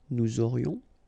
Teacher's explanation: final S not pronounced, and then you've got this liaison